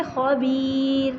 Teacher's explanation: یا ساکن جو ہے اس کی وجہ سے را کو باریک پڑھیں گے